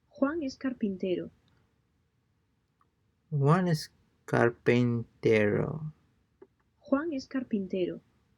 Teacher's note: pay close attention to the falling intonation at the end of the sentence